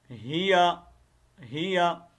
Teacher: یہ اکثریت غلطی یہی ہوتی ہے کہ یہاں پر یا کو لمبا کرتے ہیں، لیکن یا کو لمبا کرنے کا کوئی جواز ہی نہیں ہے یہاں پر